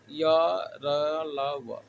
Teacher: दूसरा है अंतःस्थ व्यंजन वर्ण। अंतःस्थ व्यंजन का उच्चारण जो होता है अल्प स्पर्श होता है। मुख के जो आंतरिक अंग होते हैं अल्प स्पर्श करते हैं आपस में, तो अंतःस्थ व्यंजन वर्ण का उच्चारण होता है।